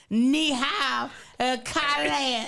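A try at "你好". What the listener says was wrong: You got to listen to the tone. That's your problem. Kylan. Ni. Kylan. Ni hao, Kylan.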